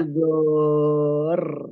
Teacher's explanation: Jadi R-nya agak ditahan ya. R-nya agak ditahan. Karena ro sukunnya double. Ro sukunnya 2.